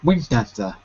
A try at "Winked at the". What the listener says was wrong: There was an extra syllable there. You said wink. Da da da. One too many. One too many. Winked at the. Winked at the. Winked at the. The K.